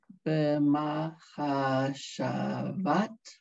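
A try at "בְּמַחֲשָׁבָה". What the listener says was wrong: No tav. Hey, silent. Hey is silent and it ends a word with no vowel, guys.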